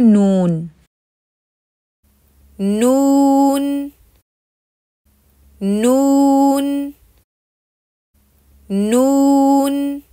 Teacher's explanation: वाव की वजह से फिर होंठ अच्छी तरह गोल हो जाएंगे